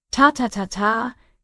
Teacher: Every syllable has the exact same length and the exact same power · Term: machine gun